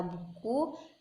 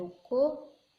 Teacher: sedangkan bunyi vokal belakang seperti u pada kata buku dan o pada kata ruko dengan bibir dibulatkan